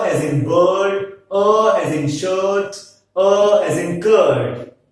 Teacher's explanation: This can also be defined as a central vowel between the half closed and half open line and it is unrounded.